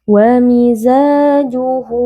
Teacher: Miza di sini ada alif yang sebelumnya berharakat fathah. Hukumnya adalah mad tabi'i, dibaca panjang 2 harakat